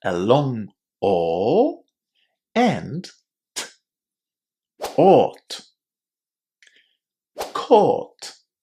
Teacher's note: this ending is pronounced as just 2 sounds. A long O and T.